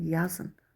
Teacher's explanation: In hecasının üstünə vurğu düşməz.